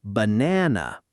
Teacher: banana with the middle syllable strong and the first and last syllables relaxed into that same soft uh sound